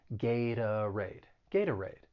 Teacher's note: that t i'm gonna use a flat t and that second syllable i'm gonna use the schwa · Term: flap T